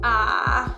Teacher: The third tone doesn't actually go back up. When we learn pinyin, it's like third tone is ah.